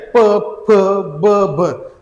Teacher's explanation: यांचा उच्चार आपल्या ओठातून म्हणजे आपली ओठाला ओठ लागतो म्हणून यांचा उच्चार आपला कुठून होतो ओठातून होतो म्हणून यांना म्हणतात · आणि शेवटचे जे आहेत प, फ, ब, भ आपली जीभ तर कुठंच लागत नाहीये ह्या प, फ, ब चा उच्चार करताना. मग यांचा उच्चार आपल्या ओठातून म्हणजे आपली ओठाला ओठ लागतो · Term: ओष्ट वर्ण, ओष्ठ वर्ण